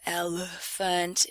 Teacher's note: it's the one and only reduced vowel we reduce the time and energy we put into it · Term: schwa